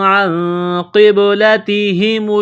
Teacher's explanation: یہاں نون ساکن کے بعد قاف ہے، حروف اخفا ہے تو آواز ناک میں چھپائیں گے، غنہ کریں گے ، اس ناک میں آواز چھپانے کو اخفا کہتے ہیں۔ قاف · قاف کو موٹا کرنا ہے، با ساکن ہے، با پر قلقلہ کریں گے